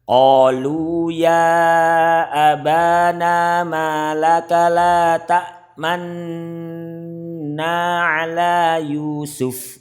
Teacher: Bacaan Ismam. Bibir mencucu di tengah-tengah gunah sebagai isyarat bunyi dhammah.